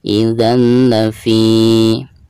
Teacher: Di sini huruf lam dan termasuk idgham bila gunah ya. Jadi cara membaca tanwin di sini itu harus dimasukkan ke huruf lam tanpa ada gunah